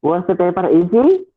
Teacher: easy right once the paper is d so this this uh this rising intonation actually indicates that that is a question